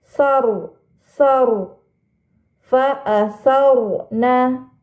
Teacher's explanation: ada huruf ro sukun sebelumnya terdapat harakat fathah maka rnya harus dibaca tebal